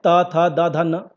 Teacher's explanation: त वर्ग दांतों से टच करता है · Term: दंत व्यंजन